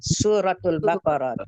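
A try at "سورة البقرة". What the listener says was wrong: surat jangan suratul.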